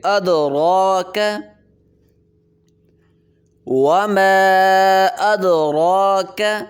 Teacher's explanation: مد ہوگی، 3 دفعے مقدار اس کو کھینچیں گے، وما أدراك، دال پہ قلقلہ کریں گے، را کو موٹا کریں گے